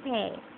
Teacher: Closing diphthong, beginning at a slightly below half closed position and moving towards I. The lips are spread. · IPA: /ei/